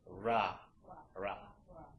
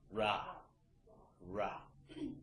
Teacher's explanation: your tongue is just kind of situated to the point where it doesn't really touch that ridge the alveolar ridge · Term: r sound